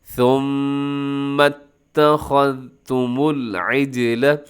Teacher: میم مشدد ہے، تو وہاں پہ اپنے غنہ کرنا ہے، آواز کو ناک میں لے کے جانا ہے، اور میم کو پھر آگے آپ نے ملانا بھی ہے تا کے ساتھ۔